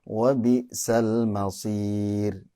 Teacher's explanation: ro sukun kemudian diawali dengan kasroh ya. Itu harusnya tipis.